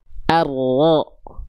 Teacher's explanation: Huruf ro dilafkan dari ujung lidah, tapi bukan ujungnya banget.